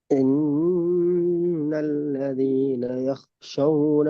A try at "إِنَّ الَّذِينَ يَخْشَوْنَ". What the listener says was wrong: ஷா அல்ல ஷே.